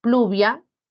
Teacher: evolucionaron a una elle los grupos iniciales de pl cl FL por ejemplo pluvia se convirtió en lluvia en español Ven y